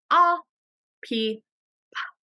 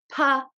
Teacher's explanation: We don't use our voice box when we say the sound for the letter P. So it's just a puff of air.